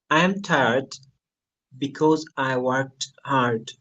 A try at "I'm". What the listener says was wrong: I am টা উচ্চারণটা একটু হবে শুধু আ এবং এম সাউন্ড।